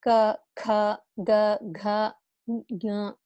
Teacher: the sounds are coming from throat. So that's why it's called kantaha. Kantha means throat, neck.